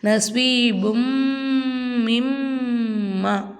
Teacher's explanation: அப்போது பு இம் பும் நஸ்வி பும். இந்த மீமுக்கு மேலே சத்து வந்தனால மீமை நம்ம நல்லா அழுத்தி உச்சரிக்கணும்.